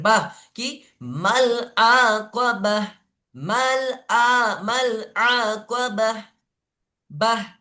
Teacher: আমি আবার বলি, গোলতাকে যখন ওয়াকফ করবেন, গোলতাতে যখনই থামবেন, তখন গোলতাটাকে হা করে নেবেন, হা সাকিন করে পড়তে হবে।